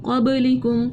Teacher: قلقلہ کیا کیونکہ با ساکن ہو رہی ہے, با حرف قلقلہ میں سے ہے